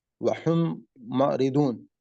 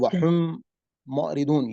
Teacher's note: 2 میم ہیں لیکن ساؤنڈ تقریباً ایک ہی نکل رہی ہے، اور ہم ساتھ اس کو غنہ بھی کر رہے ہیں. غنہ کا مطلب یہ ہے کہ ہم اپنے جی جی جو ناک کا اوپر والا حصہ ہے وہاں سے اس کا جی ساؤنڈ جو ہے وہ نکالیں گے.